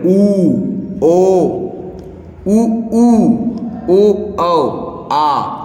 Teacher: इनका उच्चार करने पर हमारा जो होठ है दोस्तों होठ जो है वृत्त की तरह काम करता है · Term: वृत मुखी